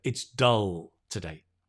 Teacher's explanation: i'm not hungry so i don't eat it it's dull good the tongue just rests relaxed on the teeth so you get that dark l